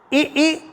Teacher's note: आ आ तो दोनों कंठ से है शुरुआत कंठ से है इ ई दोनों का उच्चारण तालू है